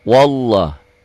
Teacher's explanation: patahnya biasa tapi tetap dibacanya panjang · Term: mad asli